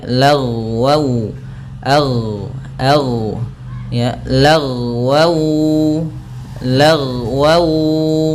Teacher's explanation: ketika dia sukun jangan sampai memantul karena huruf gain tidak ada sifat qalqalahnya